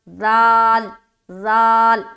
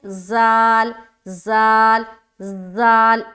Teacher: ذال یہ نرمی سے ادا ہوتا ہے اور اس میں سیٹی والی آواز نہیں آئے گی، جبکہ زا جو ہے، زا را کے بعد جو زا آتا ہے اس میں اس کو ہم سخت ادا کرتے ہیں، اس میں سیٹی کی آواز آتی ہے۔ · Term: حرف ذال